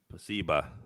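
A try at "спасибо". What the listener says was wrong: Spasiba with a S, like specific. Spasiba. Yeah, so you pronounce it spasiba, but when you look at it, it's when you actually read it in letters, it's actually spasibo.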